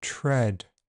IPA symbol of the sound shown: ɹ̥